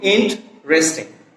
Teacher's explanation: এখানে ই ভাওয়েলটা ড্রপ করলে হয় কি ইন্টারেস্টিং। উচ্চারণটা হবে কি ইন্টারেস্টিং।